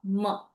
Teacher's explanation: ma is your anunasika. So it is also using the nose to utter it.